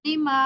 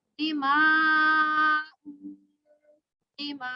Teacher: मीम अलिफ मद ज़बर मा, हमजा तो पेश मा, वक्फन मा, दिमा। हमजा की जो आवाज है वो झटका दे के निकालेंगे